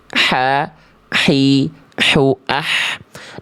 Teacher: makhraj huruf hak kecil dari tenggorokan tengah · Kalau kho itu lebih kasar, kalau H kecil lebih bersih, berbisik dan lembut.